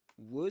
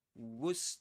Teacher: And the accent, the accented syllable is the first one.